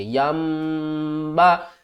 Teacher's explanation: نون کی آواز کو میم کی آواز میں بدل کر پڑھیں گے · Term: اقلاب